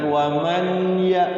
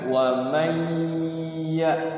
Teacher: ya bertemu dengan huruf ya maka wajib dibaca idgham bunah jadi nunnya masuk ke Iya Yang Bunyi gunahnya itu adalah bukan bunyi nunnya tapi bunyi ynya jangan waman ya tapi Wam langsung masuk dulu ynya digunakan wamya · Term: idgham bi gunnah